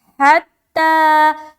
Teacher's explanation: आगे हत्ता, हा ता जबर हत, ता खड़ा जबर ता, हत्ता, हा को बिल्कुल सीने की तरफ से निकालेंगे